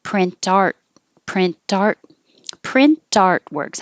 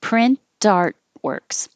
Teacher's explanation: Or you can say the T and have it connect to the A, print art, print artworks. I'm putting the stress on art.